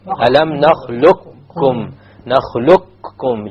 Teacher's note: You immediately move on to the kaf and you drop the qaf.